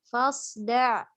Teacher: Pada sod dia memiliki sifat hamas itbaq dan isti'la. Kalau nggak kita berikan hamas itbaq dan isti'lanya, maka dia akan mirip dengan zai.